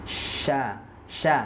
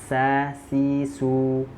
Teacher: At-tafashi itu menyebarnya angin di dalam mulut.